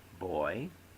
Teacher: in the word boy the vowel sounds come together so closely that they remain one syllable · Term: diphthong